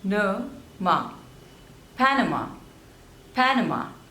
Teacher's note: there are three syllables and you have to stress on the first one